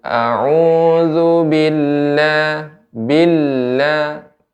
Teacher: ketika ada tasydid lam ya, maka ada lebih sedikit ditekan ya, sedikit diayun